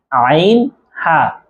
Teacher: আইন হা আইন হা এ দুইটা হরফ হলকের মধ্যখান হইতে উচ্চারণ হবে। অর্থাৎ কন্ঠনালীর যে মাঝখান আছে সেখান থেকে উচ্চারণ হবে